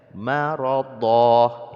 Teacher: tanwin harkat fathah ketika dia diwakafkan maka diganti menjadi mad asli, jadi dibaca maradha, ini disebut dengan man aywad, ya.